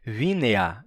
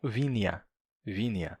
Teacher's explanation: as pessoas estavam pronunciando e também escrevendo vinea como vineia com i. Vineia tava mudando de pronúncia.